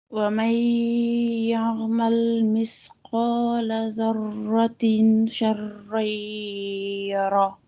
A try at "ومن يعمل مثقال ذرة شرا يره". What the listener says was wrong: Normalement, on ne dit pas zarratin avec le noun. On fait le ikhfa zarratin sharran yara.